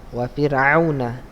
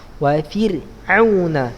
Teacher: Wa fir'auna. Ro-nya tipis saja.